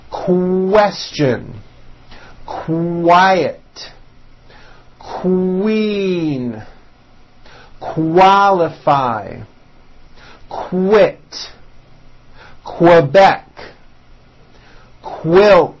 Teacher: Q sounds are made with the k sound CK and the W sound W put together